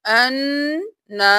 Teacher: گے؟ حمزہ زبر نون ان، نون زبر الف نا، ان نا، نون پر تشدید ہے غنہ کریں گے، الف کی وجہ سے ایک الف کے برابر کھینچیں گے